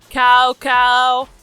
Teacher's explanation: it's a combo of a and uh